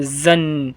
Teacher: زا کو جب پڑھیں گے تو زبان بالکل جھنجھنا جائے گی، اس طریقے سے پڑھیں گے تھوڑا زور سے۔